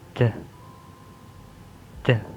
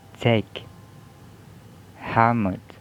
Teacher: There is voiceless alveolar stop, and the example word are take, helmet.